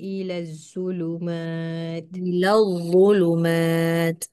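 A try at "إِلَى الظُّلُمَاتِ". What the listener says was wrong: sebab apa dia jadi macam tu sebab dia tak keluarkan lidah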